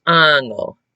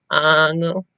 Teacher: you're pushing out a t sound with a lot of air